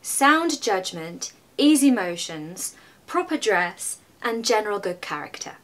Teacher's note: my voice actually goes down when I say General good character because it's resolving